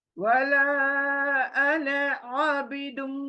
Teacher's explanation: मीम को बोलते वक्त थोड़ा रुक जाना है मुंह में मीम गुनगुनाना है